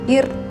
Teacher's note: sebelum huruf ro itu ada huruf berharokat kasroh, ir misalnya, maka ro-nya dibaca tipis